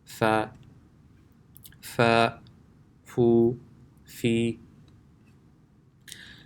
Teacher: The makhraj of Fa is when the inner portion of the lower lip touches the edge of the upper 2 front teeth.